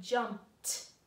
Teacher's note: So we had to make that ED sound like T